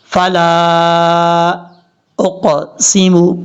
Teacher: لام کے آگے جو الف ہے، الف کے اوپر مد ہے، اس مد کو مد منفصل کہا جاتا ہے. 2 الف کے برابر آپ نے اس کو لمبا کرنا ہے